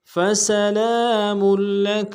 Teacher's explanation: سین کی سیٹی باریک ہوگی